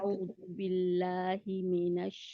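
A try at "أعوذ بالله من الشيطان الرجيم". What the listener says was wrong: में है ना, में नहीं है, मी नशै। पहले अपनी मी पहले कहें अलहदा। ठीक है, क्योंकि ये आदत पड़ी हुई है हमें में नशैता कहने की ना,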